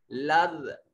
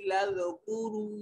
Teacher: जाल की अदायगी के वक्त मुंह से सीटी की आवाज नहीं आनी चाहिए। लज़, तो आपकी जुबान की जो नोक है ये सामने वाले जो 2 दांत हैं उससे गोल होकर नीचे की जानिब लगे तो ये जाल अदा होगा।